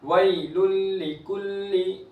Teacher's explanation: तनवीन के बाद लाम हुर्फ यरमनुन में से इदगाम होगा बगैर गुन्ना के